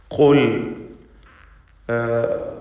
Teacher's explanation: അതിനെ തഫ്ഖീം ചെയ്യണം അഥവാ തടിപ്പിച്ച് സ്വരഭാരത്തോടെ ഉച്ചരിക്കണം. ഖുൽ അഖ്സൽ ലിസാൻ എന്നതാണ് ഖാഫിൻ്റെ മഖ്റജ്, നാവിൻ്റെ അങ്ങേ അറ്റം, അവിടെ നിന്നാണ് ഖാഫ് ഉച്ചരിക്കപ്പെടുക. ഖുൽ മൻ, ലാം ഇദ്ഹാർ ചെയ്യേണ്ട ലാമാണ്.